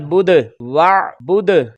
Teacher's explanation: करेंगे। वाव ज़बर आइन वा, बा पेश दाल बुद वा बुद, ये आइन गैर कलकला था और दाल हुरूफ़े कलकला में से था, तो इस पर आवाज लौट कर आई